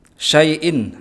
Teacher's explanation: ya sukun yang diikuti oleh fathah maka dibaca lembut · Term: mat layyin